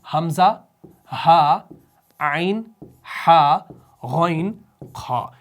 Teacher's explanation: کیونکہ یہ حلق سے ادا ہونے والے حروف ہیں، ٹھیک ہے نا، اس وجہ سے ان کو حروف حلقی کہا جاتا ہے۔ حمزہ ہا نچلے والے حلق سے، عین ہا درمیانی حلق سے، غین خا اوپری حلق سے